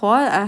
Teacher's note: شین کے اوپر زبر اور الف مد بن رہی ہے یہاں پہ کھڑی زبر ہے تو 2 کاؤنٹس کی الف مد. اور جب خو ہم کریں گے تو بیک آف دا ٹنگ اٹھے گی اور اس میں ہونٹ راؤنڈ نہیں ہوں گے تو اس کا خیال رکھیے گا.